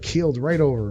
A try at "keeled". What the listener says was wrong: You mean keel? Keel. Because it sounded like you said killed.